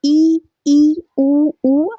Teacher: वे स्वर जिनके उच्चारण में मुंह बहुत कम खुलता है। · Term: संवृत